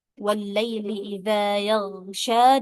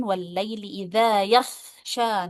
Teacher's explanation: Nah, itu kesalahan seperti ini termasuk lahan lahanjali ya karena dia mengubah huruf yang tadinya huruf gin malah menjadi huruf qo